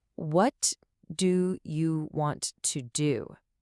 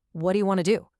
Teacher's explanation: But in a real conversation, this completely transforms into, what do you want to do? What do you melts into what'ya, and want to becomes wanna.